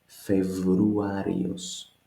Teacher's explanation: The B turns to V.